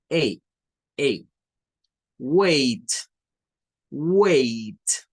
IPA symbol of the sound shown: eɪ